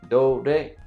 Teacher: In Japanese, the length does not change and you don't really make the syllable louder. It's all about pitch.